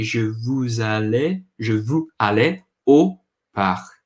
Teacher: It's hard to say park when you get that R in the back of the throat. And AU makes an O sound, like the letter O almost.